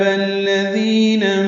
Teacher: ذی یا مدہ ہے، دو حرکات لمبا کرنا ہے